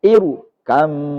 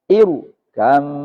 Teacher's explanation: Karena alifnya itu adalah hamzah wasol. Jadi kalau ada ro sukun, diawali hamzah wasol, dia tetap dibaca tafkhim.